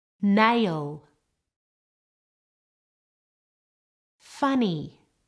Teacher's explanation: the air comes out of the nose